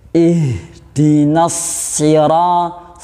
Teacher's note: tempat makhrajnya itu di pangkal tenggorokan. Punya sifat hamas, jadi ada aliran nafasnya